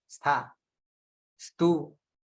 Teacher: સ પોતે પણ દંત્ય છે